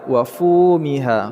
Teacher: fu memanjang dua harakat , dan ha juga memanjang dua harakat